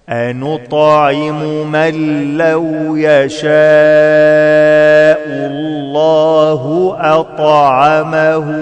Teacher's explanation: كلمة يشاء فيها مد واجب متصل أربع حركات